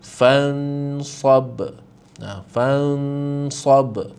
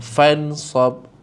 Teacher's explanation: Jadi nun kat sini kita kena sembunyikan dia dengan dengung. Jadi kita samar-samarkan bunyi nun tu. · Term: ikhfa hakiki